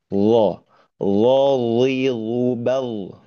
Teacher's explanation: Lo itu adalah versi tebalnya.